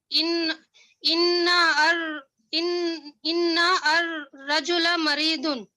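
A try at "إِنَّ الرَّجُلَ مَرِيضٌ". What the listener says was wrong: So no, it will not be inna ar-rajula, because this is hamzatul wasl. Okay. So it will become silent. So it will be directly Inna rajula So inna rajula maridun.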